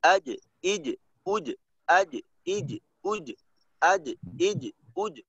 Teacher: এই জিমের মাঝে যেন ওই বাতাস বের না হয়, বাতাস বের হইলে তাহলে কিন্তু এই হামস হয়ে যাবে, আর এখানে হামস না। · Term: জিমের কলকলার